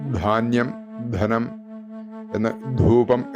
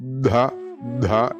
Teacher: ധ ധാന്യം ധനം എന്ന് ധൂപം എന്നൊക്കെ ഉച്ചരിക്കുന്ന ധ അതും ഇതേപോലെ ശരിയാക്കാനായിട്ട് ദാനം ദീനം എന്നൊക്കെ ഉച്ചരിക്കുന്ന ദ അതിന്റെ കൂടെ ഹ ചേർക്കുക ദഹ ദഹ എന്ന് അഞ്ചു തവണ ചൊല്ലുക അതിനുശേഷം ദഹ ദഹ ദഹ പിന്നീട് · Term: മഹാപ്രാണനായിട്ടുള്ള അക്ഷരങ്ങൾ